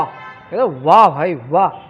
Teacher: दांत थोड़े से उठते हैं, होंठ जो होते हैं, यहाँ ओष्ठ लिखा हुआ है, होंठ जो होते हैं वो आगे बढ़ते हैं, चिपकते नहीं हैं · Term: दंतोष्ठ